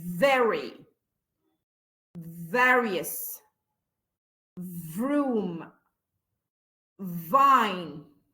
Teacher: V ده توأم الاف، والاثنين بيطلعوا من نفس المخرج، بس واحد فويسلس اللي هو الاف، واحد فويس بقى خناقه، تحط ايدك هنا تلاقي فيه V.